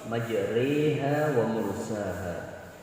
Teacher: karena imalah maka bibirnya agak dimiringkan juga ketika membacanya. Bukan cuma sekedar dibaca tapi bibirnya dimiringkan sedikit.